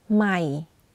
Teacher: You can hear that my voice goes in a lower pitch when pronouncing the word. · for low tone, you add a slight falling low pitch.